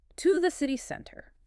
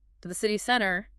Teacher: I can hear that rise at the end. It goes up. It must go up. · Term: Rising intonation